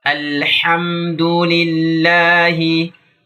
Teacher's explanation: Ha ini merupakan huruf yang keluar dari tenggorokan. Dan tenggorokan bagian tengah tentunya barengan dengan huruf Ain. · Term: huruf tenggorokan